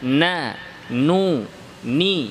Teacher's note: নুন হরফটা আদায় হয় দুইটা অঙ্গের মাধ্যমে জিহ্বা এবং নাকের বাঁশি নুনের অর্ধেক হচ্ছে জিহ্বাতে অর্ধেক হচ্ছে নাকের বাঁশিতে